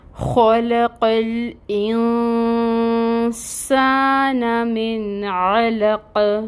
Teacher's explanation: عین کو وسط حلق سے نکالنا ہے اور اس کے اوپر فتحہ کی حرکت ہے، فتحہ کی حرکت 1 کاؤنٹ ادا کی جائے گی۔ · قوف حروف مستعلیہ میں سے ہے، پر پڑھا جائے گا، اور اب آگے وقف آ رہا ہے، آیا مکمل ہو رہی ہے، تو اس کو ہم ساکن بھی کریں گے۔ جب ہم ساکن کریں گے نا قوف کو، تو یہاں پہ قلقلہ ہوگا